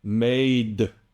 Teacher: the duh that you're hearing at the end is the way we release the D sound in English. Now, this can be very confusing for you because your ear hears that release and immediately thinks, that's a vowel, or he's voicing that silent E.